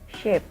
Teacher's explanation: The sh sound is called voiceless palatal fricatives